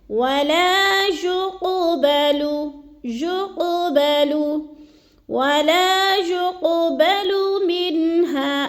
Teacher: حروف قلقلہ 5 ہیں، قاف، طا، با، جیم، دال۔ تو یہ حروف قلقلہ میں سے قاف آ گئے تو اس کو ہم نے ہلا کر پڑھنا ہے، یعنی قلقلہ کرنا ہے · قاف موٹا ہے، موٹا کر کے اس کو پڑھنا ہے، اور قاف ساکن ہے اور حروف قلقلہ میں سے ہے۔